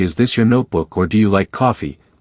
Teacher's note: you can clearly hear the upward pitch